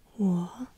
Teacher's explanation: 我 could be down and up.